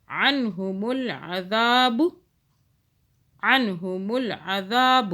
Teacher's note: ذا کو کھینچا، ذال کے آگے الف ہے نا، ذال کو سافٹ بھی پڑھنا ہے